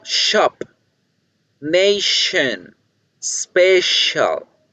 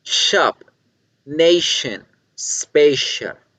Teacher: se hace en los alveolos cierto y hacemos este sonido especial es la s más gruesa y como se hace más gruesa el sonido se va hacia el paladar